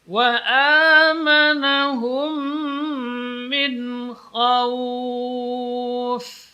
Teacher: Wa amanahum, di sini idgham, mim mati ketemu dengan mim.